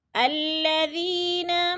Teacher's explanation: یا ساکن سے پہلے ذال کے نیچے زیر ہے تو یا مدہ، یا مدہ کو بھی ہم نے ایک الف 2 حرکات کے برابر لمبا کر کے پڑھنا ہے۔